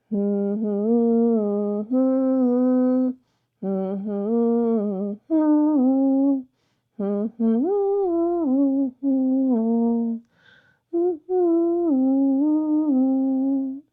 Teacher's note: And if you felt that buzzy vibration where the tip of the tongue meets the upper gum ridge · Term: humable consonant